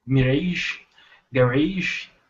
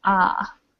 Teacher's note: the mirage and garage, they kind of have more of an open A sound